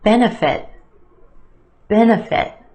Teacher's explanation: three syllables here our emphasis on the first syllable